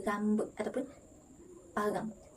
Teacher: Dalam dialek Hulu Pahang, perkataan rambut mengalami perubahan pada bunyi R di awal perkataan iaitu bunyi getar R digantikan dengan bunyi kesaran seperti H